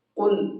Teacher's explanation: قاف کو پر کر کے پڑھیں گے